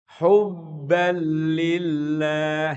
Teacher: Jadi tanwinnya hilang dalam artian nunnya hilang masuk kepada lam. Seakan-akan enggak ada tanwin itu hubban lillah.